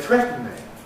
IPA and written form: ˈθretn̩ɪŋ (threatening)